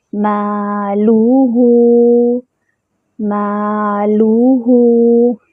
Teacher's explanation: مالوہ، مالوہ، میم پہ الف مد بن رہی ہے، الف خالی، اس سے پہلے فتحہ الف مد، اس کو 2 حرکات برابر لمبا کریں گے۔ لام پر ضمہ ہے اور ہا پر بھی ضمہ ہے، دونوں میں ہونٹوں کو مکمل گول کریں گے، اور ہا پر جو ہے وہ واو صغیرہ بن رہی ہے، اس کو 2 حرکات برابر لمبا کریں گے۔